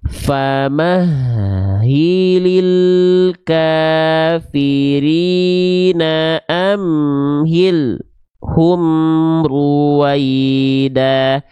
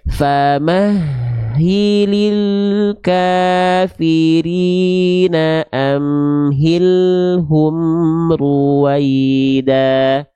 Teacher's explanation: Lam sukun tidak boleh terputus suaranya. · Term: tawasud